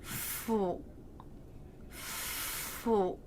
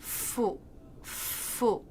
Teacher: my bottom lip was touching the bottom of the top front teeth, fu, and then the lips round out. My tongue doesn't have to move.